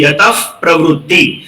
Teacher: વિસર્ગ પછી કોઈ પણ પદ જ્યારે પ થી શરૂ થતું હોય ત્યારે આપણે વિસર્ગનું ઉચ્ચારણ અડધા ફ જેવું આપણે કરીએ છીએ.